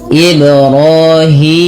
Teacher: Ro dan hi dipanjangkan dua harakat karena keduanya ada mad thab'i. Yang pertama ro dengan alif kecil, hi dengan ya kecil yang tandanya seperti ini.